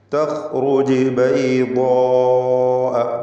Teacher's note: ളാദ് ഇസ്തിഅലാൻ്റെ ഹർഫാണല്ലോ, അതിനും അതിൻ്റെ ദീർഘാക്ഷരമായ അലിഫിനും തഫ്ഖീമാണ്. ബൈദാഅ ഇതിലുള്ള ദീർഘം മദ് മുത്തസിൽ വാജിബ് എന്നതാണ്.